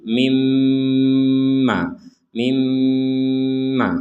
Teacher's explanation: Ada nun sukun bertemu mim, maka kita masukkan nun ini kepada mim sehingga menjadi mimma.